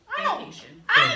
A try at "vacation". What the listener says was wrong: Oh, you need to pronounce that V a little better. Because it sounds like you said vacation.